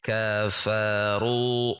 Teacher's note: ro ini dibaca tebal dengan menegangkan pangkal lidah. Tidak ru tipis.